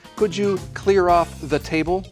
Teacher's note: the other pronunciation for the is of course the with a schwa sound